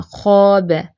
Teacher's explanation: خو fat letter ہے تو اس کے لیے آپ کو موٹا ادا کرنا ہوگا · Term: تفخیم